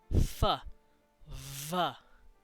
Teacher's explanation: a v sound very well it's because it's our our uh it's our bottom lip meeting with the top of our teeth to make those sounds